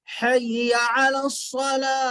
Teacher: حی علی الصلاۃ غلط ہے۔ حی، ہا بڑی ہا، بڑی ہا بیچ حلق سے ادا ہوتی